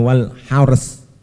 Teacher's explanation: Roknya tebal, cuma saknya itu huruf tarkik, maka harus meringis. Hars harus main bibir. Moncong ya meringis, moncong meringis lagi.